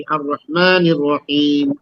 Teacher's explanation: आप नून को डायरेक्ट रा के साथ मिला देती